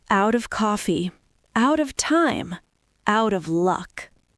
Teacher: If you learn out of as a block, you automatically learn the natural linking. You don't have to take a pronunciation class to know that the T sounds like a D.